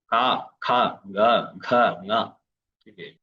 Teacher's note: ഖരം, അധിഖരം, മൃദു, ഘോഷം, അനുനാസികം, ഇങ്ങനെയാണ് ശബ്ദങ്ങൾ വരിക